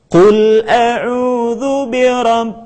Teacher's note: kita tidak membacanya dengan tergesa-gesa menjadi binnas tetapi tahan suara kita